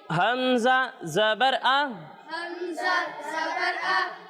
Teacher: جب ہم حمزہ کی ادائیگی کریں گے تو اسے حلق کے نچلے حصے سے پڑھنا ہے